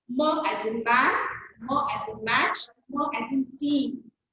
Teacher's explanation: M is bilabial nasal, okay, and three of them are voiced. Okay. M, bilabial, two lips are used. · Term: voiced bilabial nasal sound